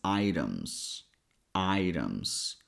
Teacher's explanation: in this word here, T sounds like a fast D sound. So, we pronounce it as items.